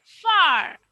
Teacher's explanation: আর sound বা যে signal সাউন্ডটা আছে সেটা উচ্চারণ হবে না, গলার মধ্যেই থেকে যাবে।